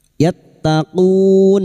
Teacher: Bertemunya mad dengan huruf hidup yang dibaca wakaf mad arid lizukun. Empat harakat kita panjangkan.